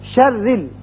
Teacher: را مشدد ہے لیکن نیچے زیر ہے، اس لیے زیر کی وجہ سے را باریک ہوگا